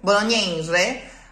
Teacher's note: all of those closed E's are very nasal, like a twang, really, literally like a twang.